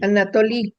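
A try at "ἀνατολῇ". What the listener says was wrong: la eta hay que pronunciar la E, no I. Anatole. en griego moderno la eta se pronuncia I, es lo que se llama itacismo o iotacismo, pronunciar la eta como I. Pero en este griego es antiguo y todavía pronunciamos la eta como E.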